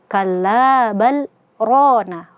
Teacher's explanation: ro kita baca tebal karena dia fathah